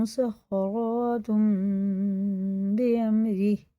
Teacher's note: مسخراتم یا مسخراتن نہیں پڑھیں گے، غنہ اور اخفا دونوں ہوں گے اس میں